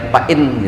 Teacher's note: Minha min idhar, fa'in idhar, jangan dengung.